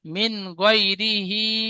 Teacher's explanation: নুন সাকিনের পরে হরফে হালকির 6টি অক্ষরের মধ্যে গয়িন এসেছে, তাই নুন সাকিনের আওয়াজকে বিনা গুণনায় জাহির করে তাড়াতাড়ি পড়বো, একে ইজহার বলে